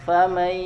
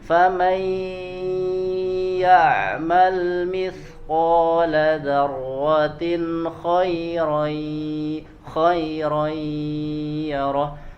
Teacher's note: tasydid pada huruf ya yang disebabkan oleh idgham ya nun sukun. Misalkan famaya, famay, maka harus masuk ke hidung dan ditahan.